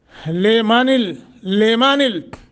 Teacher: गुन्ना नहीं होगा, इदगाम होगा, इदगाम बगैर गुन्ना।